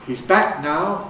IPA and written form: hiz ˈbæ(ʔ)k naʊ (He’s back now)